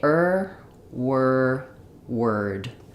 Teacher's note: the IR sound doesn't move it's not a dip thong there's no gliding into it like there is for or you're just going to say IR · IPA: /ər/